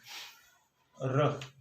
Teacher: जीवा में कंपन के द्वारा इसका उच्चारण संभव हो पाता है